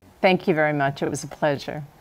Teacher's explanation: that's a falling intonation pattern and it indicates confidence and certainty linking the K or C in thank to you sounds a lot like Q